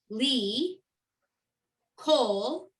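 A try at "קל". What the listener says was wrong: Now, why is it coal? There's no, I don't see the O. call.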